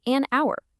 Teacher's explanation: The first sound you actually hear is ow, a vowel sound. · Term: silent